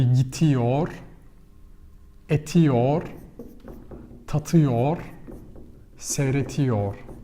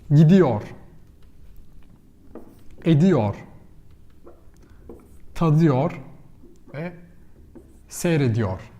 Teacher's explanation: So T becomes D, gets softer.